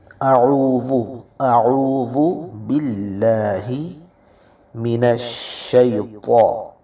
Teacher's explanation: شین میں آواز کو پھیلائیں گے صفت تفشی کی وجہ سے